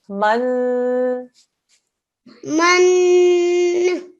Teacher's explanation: It's a noon mushaddad, so 2-second nasal sound.